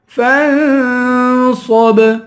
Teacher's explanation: فا پہ اخفا کریں گے، صاد کو پر پڑھیں گے، آخر میں با ہے، با حروف قلقلہ ہے، یہاں قلقلہ کریں گے.